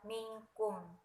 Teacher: Contohnya minkum tidak boleh dibaca minkum tetapi dibaca minkum karena suara nun sukun bersambung dengan kaf serta mendengung